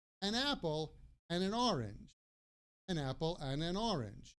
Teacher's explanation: And so an orange, the N at the an orange blends with the O